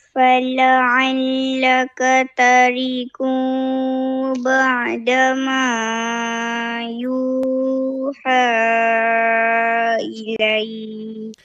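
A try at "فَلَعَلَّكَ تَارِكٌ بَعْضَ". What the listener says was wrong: Yang yang ni terbaca tarik ba'da bukan tariqu ba'da eh.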